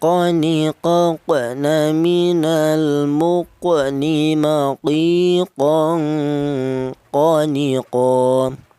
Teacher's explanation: huruf qaf keluarnya huruf berasal dari pangkal lidah. Pangkal lidah itu lidah yang bagian belakang, di mana lidah bagian belakang ditempati dua huruf, yaitu huruf qaf dan huruf kaf ya.